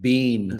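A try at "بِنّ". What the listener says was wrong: Bin. Okay, so you don't want to extend it to say bean. be like bun, ben, bin.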